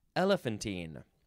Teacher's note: you can emphasize the first syllable more